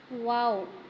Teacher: دونوں ہونٹوں کو تھوڑا سا گول کرنے سے ادا ہوگا، واو۔ ٹھیک ہے، جب ہم دونوں ہونٹوں کو گول کریں گے نا تھوڑا سا تو خود فیل ہوگا کہ واو ادا ہو رہا ہے، واو۔